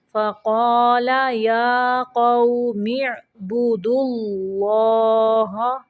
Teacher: یہاں پہ اللہ کا لام موٹا پڑھیں گے کیونکہ اللہ کے لام کے پچھلے حرف کے اوپر پیش ہے